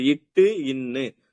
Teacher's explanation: நாக்கோட முன் பகுதி அண்ணத்தோட முன் பகுதிய தொடும் நாக்கோட முன்பகுதி நாக்கோட முன்பதினா அந்த நுனி பகுதி சொல்றோம் இல்லையா நாக்கோட நுனி · இட்டு இன்னுன்னு சொல்லும் போது நாக்கோட முன்பகுதி அன்னத்தோட முன்பகுதியை தொடும்.